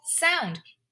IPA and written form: ˈsaʊnd (Sound)